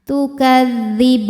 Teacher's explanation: Mad tabi'inya fathah panjang pada huruf ba, kemudian huruf yang disukunkannya adalah huruf nun. Maka ba-nya panjang, boleh 2, boleh 4 atau 6 harokat asal konsisten dalam sekali baca. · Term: mad arid li sukun